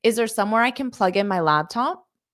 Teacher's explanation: at the end, my intonation slightly rises because this is a yes or no question. If you're asking a yes or no question, then your intonation can rise at the end to show it's a question.